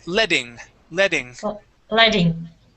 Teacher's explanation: the Double T can actually be pronounced as a D sound so instead of saying letting you can say letting leing leing